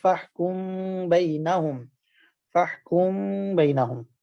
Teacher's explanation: میم کے آواز کو ناک میں چھپا کر اظہار اور ادغام کی درمیانی کیفیت کے ساتھ ادا کرنا، نہ ادغام ہو اور نہ ہی اظہار ہو۔ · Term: اخفاء شفوی